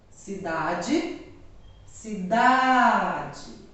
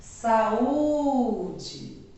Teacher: toda a palavra e que a penúltima sílaba é a mais forte nós chamamos de paroxítona